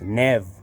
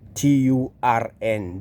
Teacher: it is spelled nerve, but you don't pronounce the R. 10, Turn, the R is not there.